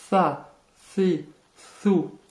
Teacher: Première difficulté, le tha. C'est un S très léger que vous prononcez en sortant légèrement la langue.